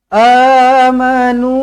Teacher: ada huruf mad selepas Hamzah berbaris atas ini ada huruf alif maka di sini adalah mad badal baca dengan dua harakat